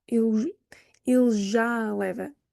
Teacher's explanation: we marry the two and just make it both a long open A